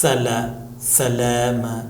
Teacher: یہ سرسراہٹ آ رہی ہے، اسے سیٹی کی آواز کہتے ہیں، صفیر پرندے کی آواز، سیٹی کی آواز۔